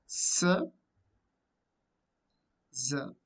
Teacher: Almost tongue goes nearer to alveolar, but it doesn't touch. Air escapes through a narrow passage.